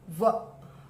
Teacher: व का उच्चारण जो है वो दंत और ओष्ठ से होता है। व तो देखो आप दांत और होठ से हो रहा है, उच्चारण करो व ऐसे।